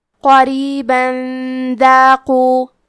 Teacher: پھر حرف الدال آتا ہے کلمت داقو. دال حروف الاخفاء میں سے ہے تو ہم یہ حکم کو غنہ کے ساتھ ادا کریں گے